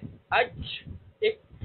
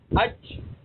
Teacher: جیم کے اندر شدت تو ہوگی، سختی بھی ہوگی، بلندی بھی ہوگی، لیکن اس کو ادا کرتے وقت آواز اوپر کو نہیں اٹھے گی، جس وجہ سے یہ باریک رہے گا، پر نہیں ہوگا۔ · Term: استفال